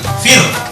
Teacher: Harokat sebelumnya kasroh. Maka di sini roh nanti dibaca tipis. Contoh misalnya fi, baca kasroh, roh mati, fir.